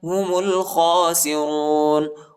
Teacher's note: میم کو لام کے ساتھ ملائیں گے، الف نہیں پڑھا جاتا، الف کے اوپر حرکت نہیں